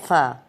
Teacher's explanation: یہ بھی ہونٹوں سے ہی اوپر والے دو دانتوں کا سیرا نیچے والے ہونٹ کے اندرونی کنارے سے لگ رہا ہے